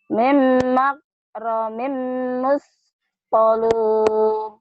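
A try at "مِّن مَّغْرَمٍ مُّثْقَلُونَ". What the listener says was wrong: Bukan min, tapi mim ya, idgham bigunah. Mim, ditahan. Iya, yang berkau mim, imnya ditahan kan idgham bigunah. Dengan dengung ya silakan.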